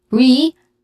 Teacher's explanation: re is a stressed syllable which has a long e sound